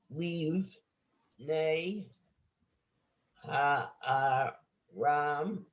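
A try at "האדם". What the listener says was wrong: Dam. That's a dalid.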